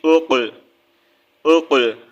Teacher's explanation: Next حمزہ قاف پیش اق، اق، حروف قلقلہ کا لیٹر ہے، ٹھیک ہے، حروف قلقلہ قاف طا با جیم دال ہم نے پڑھا تھا پیچھے، جو ہے یہ حروف قلقلہ ہے، ہم یہاں پر اس کو جو ہے قلقلہ کریں گے، یعنی کہ قلقلہ کی آواز جو ہے لوٹ کر واپس آتی ہے، جیسے کہ اکو ساؤنڈ ہوتا ہے اس طرح کی اس کی جو ہے آواز ہوتی ہے، ٹھیک ہے۔